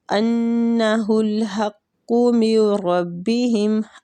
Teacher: أَنَّ نون مشدد ہے، غنہ کرنا